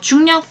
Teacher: 중력 또한 비음화가 일어나지만 이번에는 앞 음절의 종성 이응의 영향을 받아서 뒤 음절의 초성 리을이 니은으로 교체가 됩니다.